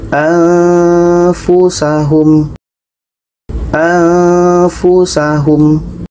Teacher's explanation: Anfusahum, nun mati bertemu fa, dengung.